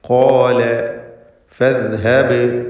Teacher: അത് സാ പോലെ ആയി പോകരുത്. ഫദ് എന്ന് ശബ്ദം ഒഴുകിക്കൊണ്ട് അല്ലെങ്കിൽ അയവോടുകൂടി ഉച്ചരിക്കുന്നു എന്നതാണ് റഖാവ ഉള്ള അക്ഷരങ്ങൾക്കുള്ള പ്രത്യേകത. ഫദ്ഹബ്, ബഇൻ്റെ സുക്കൂൻ ഖൽഖല സുഗ്റ നൽകി ശബ്ദം ഹറക്കത്ത് പോലെ ചലിപ്പിക്കുക. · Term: റഖാവത്തോടെ